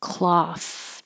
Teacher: the th is voiceless cloth only air